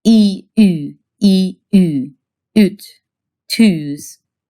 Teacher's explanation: Hungarian makes a few vowels by taking a tongue position you already know, say E, with your tongue all the way up and in the front, and then rounding your lips without moving the tongue. So if you take E as in eat and round your lips without moving your tongue, it should stay near the front as high as it can go.